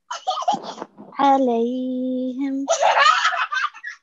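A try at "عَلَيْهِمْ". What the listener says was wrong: Jazakallah.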